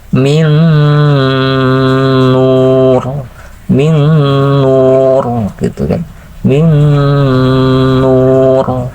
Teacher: ketika mengucapkan min, nah itu pakai guna, masukkan suara ke pangkal hidung